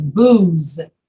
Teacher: going to serve alcohol that's what that word is booze and you have to use your voice to say the z